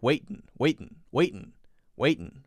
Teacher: instead of saying just waiting they often take out the ing sound and just have an um waiting waiting waiting waiting right that's